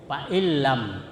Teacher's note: Ya, idgham itu artinya dimasukkan bila gunnah tidak mendengung. Jadi itu nunnya dimasukkan ke dalam lam sehingga bunyinya nun itu seperti lam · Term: idgham bila gunnah